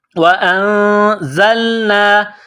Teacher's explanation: زا میں سیٹی کی آواز پیدا کرنی ہے. زا کو لام کے ساتھ ملائیں گے. · نون ساکن کے بعد زا ہے حروف اخفا ہے تو غنہ کریں گے آواز ناک میں چھپائیں گے